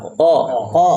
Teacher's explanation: Qaf keluar dari pangkal lidah.